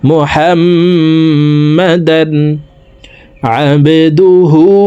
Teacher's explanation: বা কলকলার হরফ নিচের দিকে ধাবিত করে ধাক্কা দিয়ে উচ্চারণ করব। আইন বা জবরা আবে, আবেদুহু।